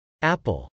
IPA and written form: ˈæpəl (apple)